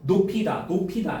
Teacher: 연음이 적용돼서 피읍 받침이 뒤로 넘어가. 그래서 높이다가 된 거야.